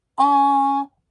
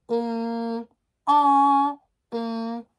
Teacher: Ma bouche est beaucoup plus ouverte sur le en.